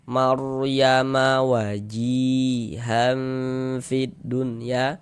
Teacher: Tebalkan huruf ra-nya sehingga pangkal lidah kita naik terangkat ke atas.